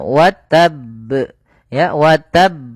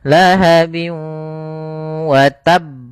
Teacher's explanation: kita tekan dulu huruf ba-nya baru dimatikan di huruf ba-nya. Wa tab, ya, wa tab. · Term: qalqalah